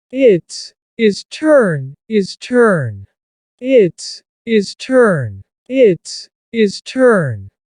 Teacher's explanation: The H at the beginning of his and her is cut off.